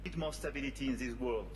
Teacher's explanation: I don't know why he's doing this, but he changed the D to a T.